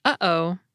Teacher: a glottal stop is also the sound we make to separate the syllables in the word “uh-oh.”